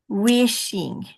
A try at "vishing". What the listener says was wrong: No, V. I'm going to make you do a V for Vishing. Vishing.